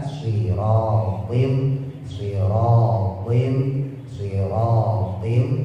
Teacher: Ada taswir, ada suara seperti siul burung.